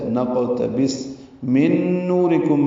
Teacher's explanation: نون ساکن کے بعد نون آیا جس کی وجہ سے ادغام ہوا، نون کا نون سے ملا دیں گے، غنہ کریں گے. من نورکم، نو واو مدہ را باریک کاف باریک میم ساکن پہ اظہار شفوی وقفا وصلا.